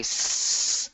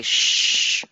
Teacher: You can feel s and sh, but if you get them to think about what shape their lips are making when they say s, and their lips are slightly spread versus when they say shh, that almost universal be quiet sound, they can see the difference in their lips being pushed further forward. Perhaps connecting them to sounds they know, like shh or the zh in vision.